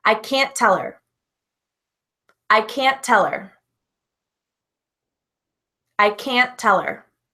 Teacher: when we have a T at the end of the word it is very common to cut it we don't pronounce it · We don't pronounce it, which is why there's a difficulty with the word can, C-A-N, and difficulty with the word can't, C-A-N-T. Because when we say can't, we don't actually pronounce that T.